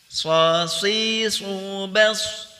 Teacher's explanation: Sod adalah huruf tebal, kemudian juga al-idbaq. Al-idbaq yaitu lidah merapat ke lak-lakan atas.